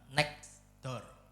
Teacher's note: Contohnya ya kayak frasa next door di dunia nyata huruf T-nya hilang. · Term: elision